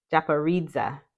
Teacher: Yes, has four syllables. The accent is primarily on the third syllable and secondarily on the last one.